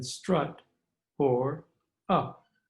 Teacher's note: by the letter u as in strut or up note that these are both short vowels and made in the middle part of the mouth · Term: middle vowels